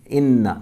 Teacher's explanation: ان نون کو ڈبل پڑھیں گے، مشدد ہے، تشدید ہے